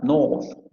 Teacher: Vamos a tener luego la posterior semiabierta labializada, north